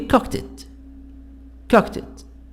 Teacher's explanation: Final ta and da sounds in verbs are linked to the vowels that follow them. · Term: linked sounds